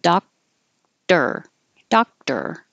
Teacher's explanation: So the K is held, doctor, doctor. This is a good reminder that it doesn't matter if it's spelled O-R, it will still sound like E-R, doctor.